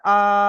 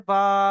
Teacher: আলিফ মাদ্দাকে এক আলিফ পরিমাণ টান দিয়ে পড়তে হবে